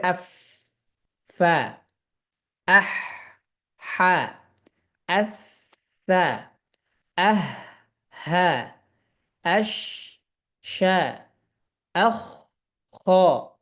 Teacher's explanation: এই হারফগুলোকে উচ্চারণের সময় বাতাস পাওয়া যাবে